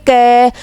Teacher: क तो क का जब हम उच्चारण करते हैं तो बोल के देखेंगे क अ का जो साउंड निकल रहा है लास्ट में अ का साउंड निकल रहा है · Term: व्यंजन